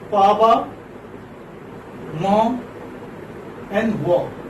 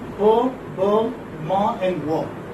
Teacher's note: in the production of bilabial sounds, your upper and the lower lip come close together and touch each other